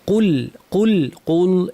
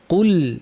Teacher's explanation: কুল কফ ভারী, লাম পাতলা।